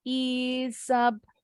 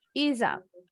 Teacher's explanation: S-nya seperti bunyi Z disambung ke bunyi U.